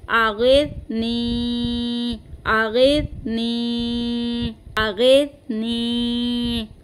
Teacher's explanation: यहाँ पे हमें सा की आवाज़ लानी है और सीटी की आवाज़ नहीं आए